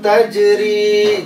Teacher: jim sukun, qalqalah dipantulkan, tajri ri panjang